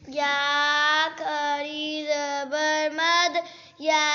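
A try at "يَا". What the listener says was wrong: آپ نے تھوڑا کیا، 2 الف پورا ہونے دینا. اسے میں انگلی کھول رہا ہوں اور بند کروں.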